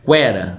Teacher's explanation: você percebe que o E é mais forte. Ela é uma vogal, ao passo que o U é uma semivogal. Por isso elas ficam na mesma sílaba, porque você tem uma semivogal e uma vogal. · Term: ditongo crescente